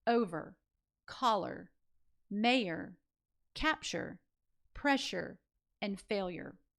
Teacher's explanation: we tend to color the schwa just a little bit with that R